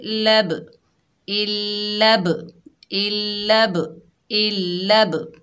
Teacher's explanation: बा हरूफ कलकला में से है, साकिन हालत में आ रहा है तो बा की डबल साउंड आएगी